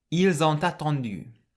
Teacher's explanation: the S on the end of il can be pronounced like a Z, and the T on the end of on can link with the A at the start of attendu. Ils ont attendu.